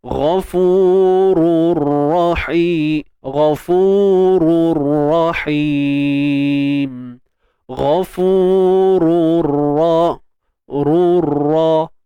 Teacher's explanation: Idgham maksudnya memasukkan. Masukkan bunyi tanwin ra ni, masukkan ke dalam ra juga. Jadi tanwin bertemu dengan ra ni hukumnya idgham bila gunnah.